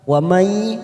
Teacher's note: Wa may nun sukun bertemu ya idgham bi gunnah, kita tekan 3 ketuk siap masuk pada huruf ya.